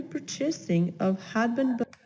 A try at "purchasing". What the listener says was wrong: A little bit of trouble with that one. Purchasing, stress on the first syllable, for the yearly purchasing.